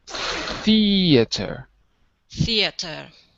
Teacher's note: so the th is voiceless in theater